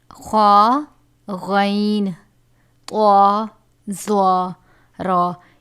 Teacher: خا غین طا ظا را یہ سب حروف مستعلیہ میں سے ہیں جسے ہمیشہ پر یعنی موٹا پڑھا جاتا ہے